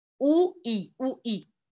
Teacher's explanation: आपका मुंह कितना खुला हुआ है, राइट जैसे ऊ बोलते वक्त बहुत कम खुला हुआ है, ई भी बोलते वक्त बहुत कम खुला हुआ है